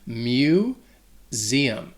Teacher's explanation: that first syllable, that mu, has like an M sound combined with like saying the word U